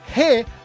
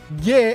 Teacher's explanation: you pronounce that as he rather than with a hard G like ge as in Gero